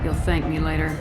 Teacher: But thank me later is is far too breathy.